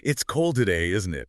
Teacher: The intonation on the tag isn't it should usually go down. >> Down, not up like a real question. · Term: falling intonation